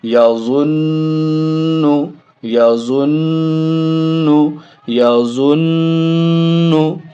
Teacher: اور میں ایک بار پھر آپ کو یاد دلا دوں، پورے قرآن میں، پورے قاعدے میں، پورے اما پارہ میں کہیں بھی نون اور میم ہو اور اس کے اوپر تشدید ہو تو غنہ وہاں ہونا ہی ہونا ہے، یعنی ناک میں آواز روکنا ہی ہے اور ایک الف کے برابر ناک میں آواز کو روک کر کے پڑھنا ہے، یہی غنہ ہے۔